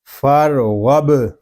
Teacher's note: غین با زبر غب، فر غب. غین پر ہوگا کیونکہ غین حروف مستعلیہ میں سے ہے.